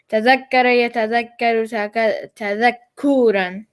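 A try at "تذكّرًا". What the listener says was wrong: Except don't make the ku so long. Tadakkuran. Tadakkuran.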